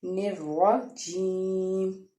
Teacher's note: را کے اوپر زبر ہے اس لیے ہم را کو پر پڑھیں گے۔ آگے جیم کے بعد یا ہے، یا سے پیچھے زیر ہے اس لیے یا مدہ کا قاعدہ ادا ہوگا، اور اس کو ایک الف کے برابر یا دو حرکات کے برابر کھینچ کے پڑھیں گے نروا جیم۔